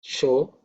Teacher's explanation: This show is palatal show, so the tongue should be parallel to the roof of the mouth.